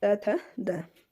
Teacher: जिनका उच्चारण ऊपर के दांतों पर जीभ लगने से होता है उन्हें क्या कहते हैं? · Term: दंत्य ध्वनियाँ